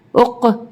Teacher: قاف پہ حروف قلقلہ کا حرف ہے اس لیے یہاں پہ ہماری آواز پلٹ کر آئے گی